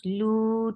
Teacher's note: 2 counts long, and circle your lips.